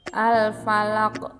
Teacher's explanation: bunyi huruf qaf pada akhir lafaz dibaca memantul dan dinamakan qalqalah kubro.